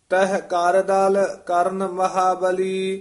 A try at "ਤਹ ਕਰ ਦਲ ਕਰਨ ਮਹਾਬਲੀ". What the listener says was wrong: ਇਹ ਕਰਦਲ ਇਕੱਠਾ ਨਹੀਂ ਕਹਿਣਾ। ਤਹ ਕਾਰ ਦਲ ਕਰਨ ਮਹਾਬਲੀ।